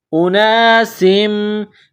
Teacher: سین کو میم کے ساتھ ملانا ہے. میم مشدد ہے تو یہاں غنہ کریں گے، آواز ناک میں چھپائیں گے